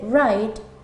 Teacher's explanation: w como en el caso de escribir que se dice wright teniendo en cuenta que comienza con una w pero omitimos el sonido